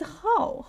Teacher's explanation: How is falling tone, which is a sharp falling tone. So you say it in a strong way.